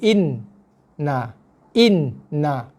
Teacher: Tekan dulu pada nun mati. Kemudian tengah-tengah tu ada dengung dulu 2 harakat. Na. Boleh Itu bacaan nunnya. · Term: nun bersabdu